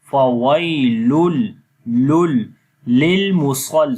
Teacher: Okay, there will be idgham but without gunna. We do not make gunna sound here, only we connect. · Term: idgham without gunna